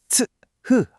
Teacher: 공기를 츠, 흐 하고 강하게 터뜨리는 파열음 계열의 소리거든요